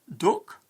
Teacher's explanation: In most Northern dialects, the a sound of Southern English becomes u. The word duck in the north of England rhymes with look.